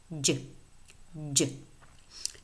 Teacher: the voiced post-alveolar affricate